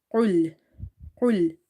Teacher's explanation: this is from the back of your tongue when it touches the soft part of your upper mouth. It's qul and heavy. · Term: Qaf